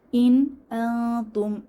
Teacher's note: এখানে ইন নুন সাকিনের পরে এই যে হামজাহ এসেছে তাহলে এখানে ইজহার স্পষ্ট করে পড়বো কোন গুন্না হবে না